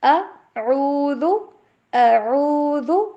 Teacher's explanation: ذال کو ادا کرتے ہوئے آپ یہ جو اوپر والے دانت ہیں نا، اوپر والے، ان کے ساتھ ہماری زبان کی نوک ٹچ ہوتے ہوئے تھوڑی سی باہر نکلے گی نا، ذال، زبان کی نوک تھوڑی سی باہر، اوپر والے دانت کے ساتھ ٹچ زبان۔